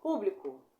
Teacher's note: E aí nós temos a proparoxítona, que é a antepenúltima mais forte.